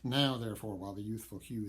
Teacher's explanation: It's a stressed syllable at the beginning of these lines that, since they're iambic, should not be stressed. But the fact that he does stress them with the monosyllable now gives us sort of an urgent beating of a bell, reminding us that time is moving on.